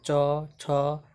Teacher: च वर्ग में देखिए इसका उच्चारण तालु से होता है, च, छ, च जो है आपको ऊपर वाले तालु में सटेगा।